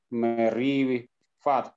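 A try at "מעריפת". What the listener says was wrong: Merifah, ini H.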